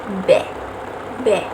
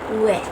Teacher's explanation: bunyi yang dihasilkan oleh pergerakan bibir bawah dan bibir atas. Caranya bibir bawah berfungsi sebagai artikulator. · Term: bunyi bilabial